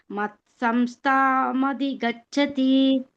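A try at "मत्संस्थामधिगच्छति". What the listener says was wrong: ಸೇರಿಸಿ ಹೇಳಬೇಕು ಸಂಸ್ಥಾಂ ಅಂತ ಬ್ರೇಕ್ ಕೊಡಬಾರದು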